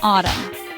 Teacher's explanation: It has two syllables. The stress is on the first syllable.